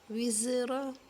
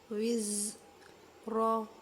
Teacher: زا کو مخرج ایسے ہے کہ سیٹی کے ساتھ ادا اور سختی کے ساتھ ہوتا ہے. وز را، را کو پر کریں گے، را کے اوپر پھر زبر آ رہی ہے.